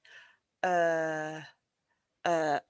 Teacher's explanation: it's just a relaxed sound and it's kind of like the sound that we say when we don't know what to say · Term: uh sound